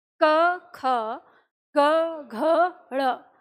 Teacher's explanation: जब आप क ख बोलते हैं तो आपको जो वाइब्रेशन सा है वो आपको अपने गले में महसूस होगा अंदर, लेकिन जैसे ही आप ग घ ड़ बोलेंगे तो वो वाइब्रेशन आपको उंगली पर भी महसूस होगा। तो इसका मतलब ये हुआ कि जो अघोष है इसमें कंपन न के बराबर हो रहा है, मतलब बहुत कम आ रहा है।